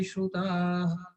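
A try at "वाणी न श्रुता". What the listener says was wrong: Visarga is not necessary. Visarga is a mistake here. Vani na shruta.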